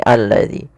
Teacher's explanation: sini langsung dijadikan seperti ini alladzi maka ini kita namakan dengan alif lam syamsiyah Alif yang ditulis tapi tidak dibaca